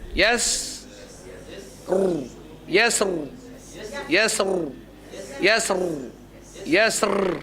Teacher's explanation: Sin nipis tapi ra tebal. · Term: Tafkhim